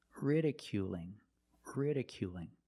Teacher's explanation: it's a light L because it's between vowels it's different ridiculing ridiculing you still have the long oo sound